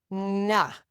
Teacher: Put your tongue tip up there." And then she'd go, "Nah." So, what she was doing is co-articulating the L with an NG